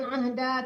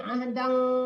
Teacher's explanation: Kalau dia kita teruskan jadi dengung, tanwin ketemu kaf ya.